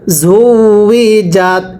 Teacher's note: সবাই একসাথে পড়বেন ঝা ওয়াও পেশ ঝু, ওয়াও জের উই, জিমতা জবর জাত, ঝু উই জাত। ওয়াওটা উচ্চারণের সময় ঠোঁটগুলো গোল করে উচ্চারণ করতে হবে